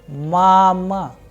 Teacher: in case of mama, the sound of first vowel a is higher, whereas the sound of second a is lower. That is why the pronunciation is mama.